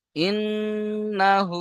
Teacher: হা উল্টা পেশ হু এক আলিফ টান হবে